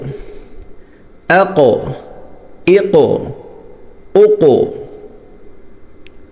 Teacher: یہ قاف موٹا بھی ہے اور اس پر قلقلہ بھی ہے